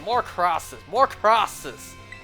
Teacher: Chinese people can't pronounce the letter L the L Sound it's pronounced like the r sound